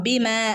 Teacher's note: മീമിന്റെ കൂടെ അലിഫ് മദ് വന്നിട്ടുണ്ട് അല്ലെ രണ്ടനക്കം നീട്ടി ഓതുകട്ടോ